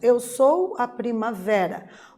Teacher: a palavra primavera o ver é a sílaba tônica é a sílaba mais intensa dessa palavra né Nós dizemos que a palavra primavera é uma paroxítona porque